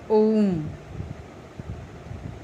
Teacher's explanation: प्लुत स्वर के उच्चारण में ह्रस्व से तिगुना समय लगता है